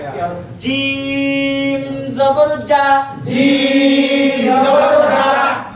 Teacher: শক্ত করে বলতে হবে, জিহ্বার মধ্যখান তার বরাবর উপরে তালুর সঙ্গে লাগাইয়া।